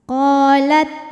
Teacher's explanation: hukumnya Mad thobii dahiri sebab ada Alif yang sebelumnya berharakat fathah maka huruf q kita panjangkan dua harakat